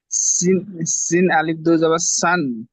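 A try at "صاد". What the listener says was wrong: সিন নয়, আলিও পড়তে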